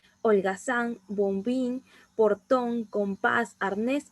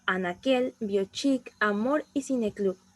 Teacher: la fuerza de voz siempre va a recaer en la última sílaba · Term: palabras agudas